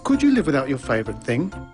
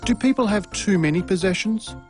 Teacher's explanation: did you notice the pitch of his voice rise at the end of the questions